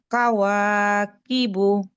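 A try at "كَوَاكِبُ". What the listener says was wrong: দম ছেড়ে যাচ্ছে, আবার দম রাখেন। কাওয়াকিবু।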